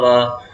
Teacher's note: वा को मैंने बताया था दंतोष्ठ होता है